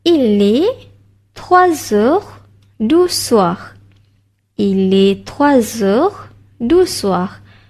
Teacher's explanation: Okey, untuk pronunciation, okey, perasan tak madam sebut 3 heures. Dekat sini ada bunyi Z.